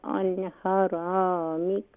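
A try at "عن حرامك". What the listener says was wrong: عن حرامک. ہا کو کلیئر کریں اور را کو مزید فل ماؤتھ کریں.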